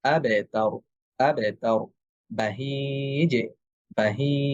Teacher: এই কলকলার ধ্বনিটাও পাতলা হবে এবং ধ্বনির সর্বশেষ যে ধনিটা আছে সেটা কিছুটা জেরের মত শোনা যাবে।